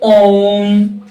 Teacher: इसे उच्चारण करने में तीन मात्राओं का समय लगता है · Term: प्लुत स्वर